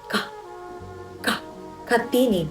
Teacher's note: ginagawa sa pamamagitan ng pagdiit ng dila sa velom o malambot na ngala-ngala at pagpapakawala ng hangin.